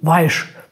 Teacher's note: im schwäbischen sagt man ja oft das S als sch